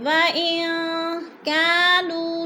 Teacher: وَإِن كَانُوا مِن قَبْلُ لَفِي ضَلَالٍ مُبِينٍ۔ وَإِن، نون ساکن کے بعد کاف آ گیا ہے تو ادھر اخفا ہو رہا ہے، آواز کو ناک میں چھپا کر پڑھیں گے